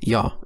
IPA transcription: j